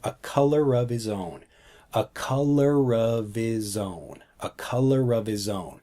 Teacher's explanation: So if you take a look at the sentence here, what we're actually blending, so a color, but we take the sound from color and move it over to of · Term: blend the sounds